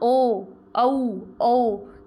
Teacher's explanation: इन सब को जब हम बोलेंगे तो हमारा जो मुंह है वो गोलाई में खुलेगा। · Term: वृत्तमुखी